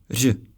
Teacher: It’s like simultaneous r and zh, but mastering this sound may take a lot of effort. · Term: R with caron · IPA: /r̝/